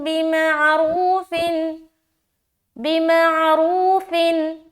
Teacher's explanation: नून की आवाज को सिर्फ जाहिर करना है, देर बिल्कुल भी नहीं लगाना। अब यहाँ तक देखें, अत्तलाक़ु मर्रतानि फ़इम्साकुम बिमअरूफिन, बिमअरूफिन, फिन एंड में नून जाहिर हो रही ना, फिन, उसके बाद बिल्कुल आगे निकल जाना है। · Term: इजहार का कायदा